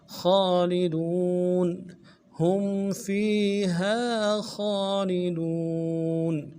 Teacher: کھینچیں گے، دو نون کو نرمی سے ادا کریں گے، خالدون خالدون وقفا میں نون ساکن کریں گے ، خالدون ہم فیہا خالدون اولئک اصحاب النار ہم فیہا خالدون۔